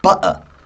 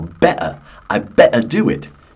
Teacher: it's called the glottal T that sort of stops in the back of your throat